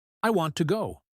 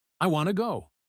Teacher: We stress want and reduce to. It sounds like, I want to go.